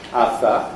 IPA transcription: ɑθɑ